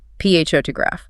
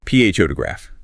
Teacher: The stress lands heavily on the first syllable.